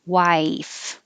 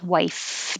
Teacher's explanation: top teeth on bottom lip and no sound